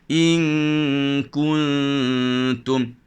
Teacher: Ustaz sembunyikan nun mati di tepi tak, maka bunyi dengungnya adalah nipis.